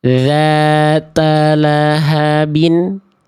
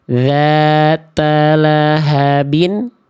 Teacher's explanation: Karena yang B ujung lidahnya nongol. Yang B ujung lidahnya menjulur. Yang B ujung lidahnya melet.